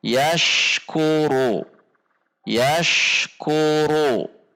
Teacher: Antara bunyi ash dengan bunyi ku tidak terjeda atau tidak terpisah.